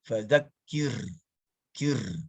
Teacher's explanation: manuvernya atau tindakannya adalah mengamalkan ro yang tarkik